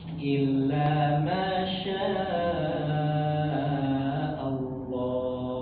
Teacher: dibaca harus panjang enam harakat juga.